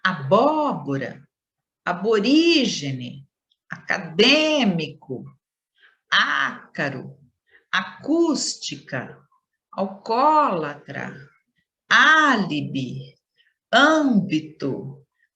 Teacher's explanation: aquelas em que a antepenúltima sílaba é pronunciada com maior intensidade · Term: proparoxítonas